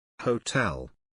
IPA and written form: həʊˈtel (Hotel)